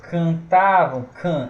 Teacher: Esse can é um som nasal, certo? Esse can que a gente lê é um ditongo nasal decrescente. O can é como se tivesse dois A aqui, ó.